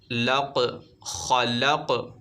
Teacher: خاء حروف مستعلیہ میں سے اسے موٹا پڑھنا ہے